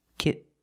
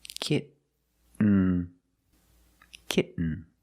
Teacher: you do the stop T kit you don't release and you fall to an N kit when you make the stop T the tongue is up